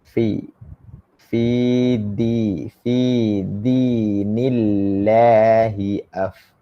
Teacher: Min batni syafatis sufla. Daripada perut bibir sebelah bawah. Kena dekat ujung gigi depan atas. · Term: makhraj huruf fa